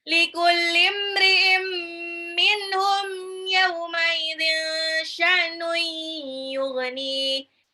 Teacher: ini ada tanwin ketemu mim, itu idgham bigunah, lebur tapi ditahan.